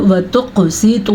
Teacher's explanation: अच्छा जी, ये वाव मद्दा है, वाव मद्दे के साथ साथ मद भी आ गई है। ठीक है, तो इस मद को अदा करते हुए हम यहाँ पे 3 से 4 सेकंड तक इस लफ्ज़ को लंबा करेंगे।